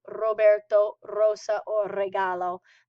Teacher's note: you may hear the beginning of these words with a native speaker pronouncing them rolling their RS